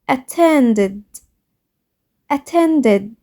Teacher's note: The verb attend ends in d sound. When we add ed to this verb, the ed make the sound id. Listen, attended, attended.